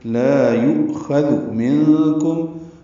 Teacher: نون ساکن کے بعد کاف آنے کی وجہ سے اخفا ہے، میم ساکن پہ اظہار شفوی ہے